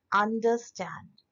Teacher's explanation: अब अंडर ये दोनों अनस्ट्रेस्ड हुए क्योंकि शॉर्ट साउंड है, खुद ही सुनिए अंडर। तीसरा जो बचा स्टैंड, ये एक स्ट्रेस सिलेबल हुआ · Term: एनापिस्ट